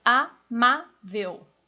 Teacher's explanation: O ma é mais forte, é a penúltima